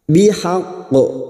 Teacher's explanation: Terdapat huruf qaf yang dibaca waqaf dan hurufnya bertasdid namanya qalqalah kubra. Bihaqqu masuk dulu baru dipantulkan dengan kuat namanya qalqalah kubra